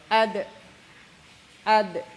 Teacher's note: ad tidak ada ya bersih ad berarti ini yang kedua jahar sifatnya jahar tertahannya nafas ya tidak ada angin